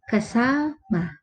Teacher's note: doon sa pantig ng sa, naroroon ang diin o bahagyang pagtigil doon sa salita